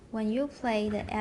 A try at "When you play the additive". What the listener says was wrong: Oh, you 不要放重音. When you play.